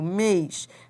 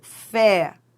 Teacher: Já a palavra fé, ó, tem timbre aberto, fé. Mês tem timbre fechado, mês. Fé tem timbre aberto, fé.